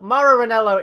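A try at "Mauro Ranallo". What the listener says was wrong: You still can't say his name right. There's literally no E's in his name.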